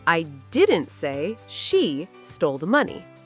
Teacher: The stress is on I. So, it means someone else said it, not me. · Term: sentence stress